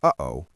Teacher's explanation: In linguistics, this is the brief stopping of airflow in the throat, the sound between the two syllables.